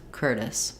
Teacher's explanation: with an s sound first syllable stress curtis um that's because the t is in between two unstressed